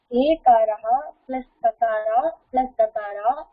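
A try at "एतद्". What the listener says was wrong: தக்காரா இல்ல, தக்காராக்கு அப்புறம் ஆ வரும், அப்பதான் தா ஆயிடும். தக்காரா plus ஆ is what will become தா. சோ ஏ தத்னு இருக்கு.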